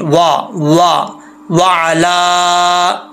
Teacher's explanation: वाओ को पढ़ते वक्त होंठ गोल होने चाहिए